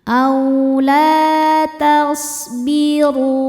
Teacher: A la ada hukum mad thobi'i zohiri sebab ada alif sebelumnya berharakat fathah. Cara bacanya huruf lam panjang dua harakat. · Huruf ro dibaca tafkhim karena harakatnya di atas dommah makonnya tebal. · Huruf ro dibaca tafkhim karena harokatnya di atas dhammah maka ro-nya tebal. Dan ru hukumnya adalah mad tabi'i dhahiri sebab ada waw sukun sebelumnya baris dhammah.